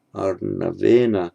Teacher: The second n now is not retroflex, because the retroflexing has already happened once, and you only do it once.